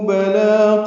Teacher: بلا میں لام پر کھڑا زبر، دو حرکات یہ بھی لمبا کرنا ہے، باریک پڑھیں گے لام کو